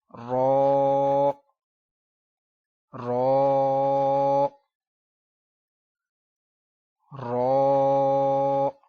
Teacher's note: رو تھوڑا موٹی آواز میں پڑھیں گے اس کو ہم، لیکن ہونٹ نہیں گول ہونے دیں گے،